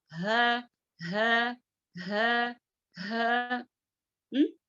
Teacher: اگر ہم اس کو پڑھیں گے تو ہمارے سینے میں آواز آئے گی